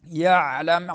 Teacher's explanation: یعلم عین درمیان حلق سے